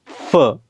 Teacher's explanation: फ चा उच्चार बायलबल न करता लबडेंटल केला